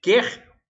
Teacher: Qualquer, esse aqui, o U, qual, é pronunciado, então não forma dígrafo. Mas quer, esse U do quer não é pronunciado. O QU aí forma o dígrafo.